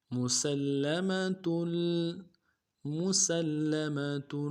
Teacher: میم کو نرم سے ادا کرنا ہے، سین کو لام کے ساتھ ملائیں گے، لام کے اوپر تشدید زور دیں گے